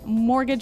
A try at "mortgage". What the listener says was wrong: Yeah, it has a T in it, but you don't pronounce it. You say mortgage. Mortgage. Not mortgage. Mortgage.